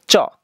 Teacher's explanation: চ যখন উচ্চারণ করবা জিভের সামনের অংশ তোমার উপরের পাতির সাথে লেগে যাবে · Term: তালব্য ব্যঞ্জন